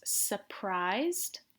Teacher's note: And remember, we don't really pronounce the R, it's surprised.